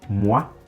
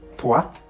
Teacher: anyway you see OI in French, it's often pronounced wa.